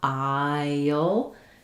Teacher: The technical pronunciation, you have the I diphthong, aisle, and the dark L. But what you'll hear is that it kind of sounds like I, and then as I'm moving from that front I, that kind of high front vowel, to the sound before the L, I end up with a little y connecting them.